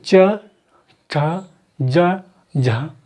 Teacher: तो मेरी जीभ जो है तालू से छू रही है, जीभ है चा, छा, जा, झा, तो ये तालू से छू रही, तो इसे बोलते हैं तालव्य वर्ग, यानी कि चा तालव्य, चा, चा, तो तालू से लग रहा है तो चा तालव्य।